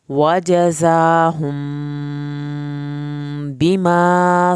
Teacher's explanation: मीम साकिन के बाद बा है, एक अलिफ के बराबर देर लगाएंगे यहाँ पर।